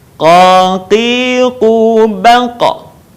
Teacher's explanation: Perhatikan qa, qi, qu. Dalam posisi mati maka terdengar suaranya memantul. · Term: huruf qa